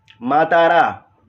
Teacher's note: माँ में भी, ता में भी आकार है, रा में भी आकार है, तो तीनों दीर्घ है।